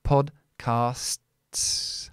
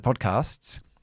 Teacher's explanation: you have a consonant group at the end, which is very difficult, which is the STS